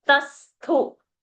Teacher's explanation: Ta is Alpa Prana and Thu is Mahaprana.